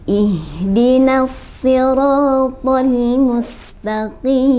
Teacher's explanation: Huruf shad kemudian huruf to, bacaannya harus terdengar tebal.